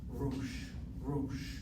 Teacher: The aleph here is not a consonant, it's the marker of a long O sound.